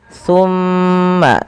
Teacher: Summa jangan langsung dilepaskan karena ia ada bacaan gunnah pada lafal bacaan ini